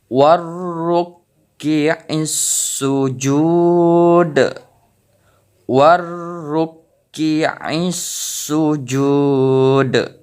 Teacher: Jadi huruf dal ini pantulannya lebih besar karena kita membacanya mewakaf ataupun berhenti di kalimat ini di huruf dal. Jadi pembacaannya yaitu hukum pembacaan dari qalqalah kubra yaitu pantulannya lebih besar.